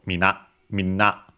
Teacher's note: both are accented on the last syllable